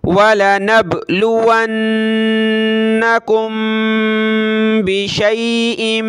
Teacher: मीम साकिन के बाद बा है तो नाक में आवाज़ पैदा करेंगे